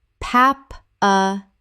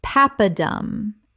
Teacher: Three syllables with the stress on the first.